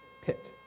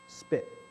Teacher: Feel this strong puff of air against your hand, pit, at the beginning of the syllable. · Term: aspiration